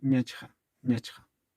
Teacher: esta misma palabra a veces en pronunciación la van a escuchar como invirtiendo estas consonantes en vez de ñachcha, como ñachja. También se escucha eso, ñachja o ñachcha.